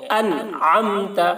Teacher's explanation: ان میں نون کو ظاہر کر کے جلد پڑھیں گے، انعمت، عین کی ادائیگی حلق سے کریں گے